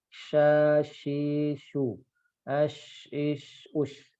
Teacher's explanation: Pangkal lidahnya tidak ngangkat, jadi suaranya tipis ya. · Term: istifal